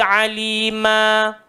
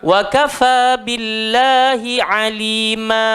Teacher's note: Wa kafa billahi alima. Okey, ain dia keluar dekat tengah-tengah tekak. Jangan hamzah pula.